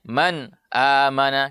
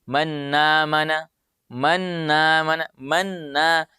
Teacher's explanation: Tidak boleh ditasydid. Sehingga bunyinya menjadi manna, manna. Seakan-akan ada tasydidnya nun. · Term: izhar